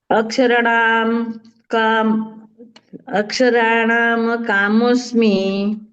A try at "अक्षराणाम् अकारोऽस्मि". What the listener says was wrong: यहाँ पर देखिए, अक्षराणाम और अकार अलग बोलने का। अक्षराणाम अकारोस्मि।